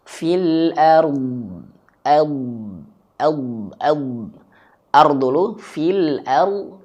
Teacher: Maka cara kita mempraktikkan adalah rnya tebalin dulu fil ard. Lalu huruf dnya dialirkan suaranya. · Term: dod